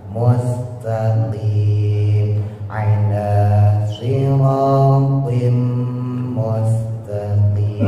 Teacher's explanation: Mustaqim, sinnya ditipisin, ujung lidah taruh bawah.